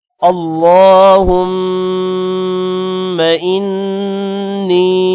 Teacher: اللہ کے نام کو موٹا کرنا ہے۔ اللہم، میم پر غنہ کرنا ہے۔